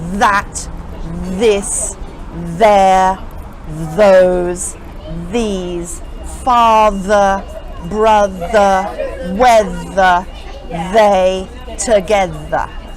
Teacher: You can actually feel the sound vibrating against your teeth, like a bee. Think of it like a buzzing bee. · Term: buzzing sound